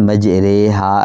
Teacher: مجریہا را کو مجہول پڑھیں گے، بڑی یہ کی آواز یہاں پیدا کریں گے۔ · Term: امالہ